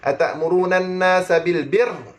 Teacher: Kalau kita berhenti, getaran ra bagi lebih sikit. Sebab apa? Ra syaddah.